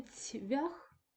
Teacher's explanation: перед наступним наполовину пом'якшеним ві ць теж м'який тобто відбувається асиміляція за м'якістю